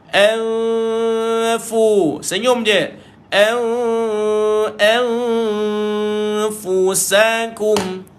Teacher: Nun kosong jumpa dengan fa, jumpa satu lagi bacaan dengung, tapi ini nama dia dengung samar, maka dia jumpa fa, maka tuan-tuan kena baca DSS, sebab huruf fa ini adalah huruf istifal, huruf yang lidah tak terangkat, dia nipis.